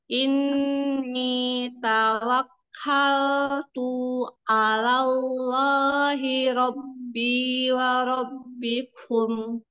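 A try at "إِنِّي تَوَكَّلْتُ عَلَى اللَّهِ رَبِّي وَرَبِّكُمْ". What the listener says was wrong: Ya, sudah bagus. Tinggal tuh-nya. Tadi keseret. Ini tawakal tu'alal gitu ya.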